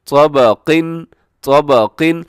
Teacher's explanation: कौ मोटा, बा बारीक है